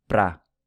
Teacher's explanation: the word para is usually pronounced pra in everyday speech